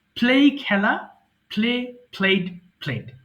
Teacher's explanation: দুই ঠোঁট একসাথে রেখে একটু শক্ত করে বলতে হবে। ওকে, you have to be a little bit energetic টু pronounce পি letter.